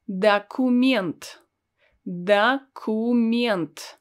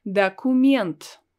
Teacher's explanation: I don't pronounce O as it's written. I pronounce it as A because it's not stressed.